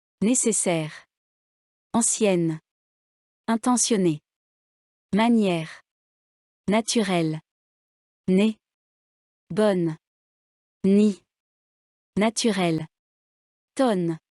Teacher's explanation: Durant la prononciation, l'air sort par la bouche et par le nez. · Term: Consonne nasale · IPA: [n]